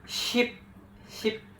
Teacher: Monong adalah bunyi vokal yang posisi mulutnya ee stabil kayak I pada kata ship.